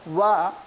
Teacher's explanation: इसमें दंत और ओष्ठ दोनों का सहयोग होता है इस वर्ण का उच्चारण करने में